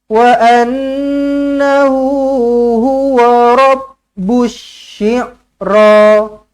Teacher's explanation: sekali lagi nun sabdu wajibul gunnah, dengungkan 2 harakat.